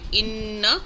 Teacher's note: کسرہ کے ساتھ نون آگے مشدد ہے، تو یہاں پر 2 حرکات جتنا ہم ٹھہراؤ کریں گے